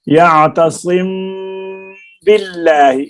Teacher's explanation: میم ساکن کے بعد با، وہاں غنہ کے ساتھ اخفا یعنی چھپا کر مخرج میم ساکن کو اپنے مخرج میں زبان لگا، یعنی ہونٹوں کو بند کر کے ناک میں چھپا کر ادا کریں گے، جیسے وَمَن يَعْتَصِم، صم ہم نے کہا نا، صم، تو آواز با کو ادا کرنے سے پہلے ہم آواز کو ناک میں لے جائیں گے